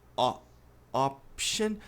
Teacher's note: Tem um leve A depois do som de O.